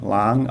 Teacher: which just gives this word a high class initial consonant uh live syllable so it's got Rising tone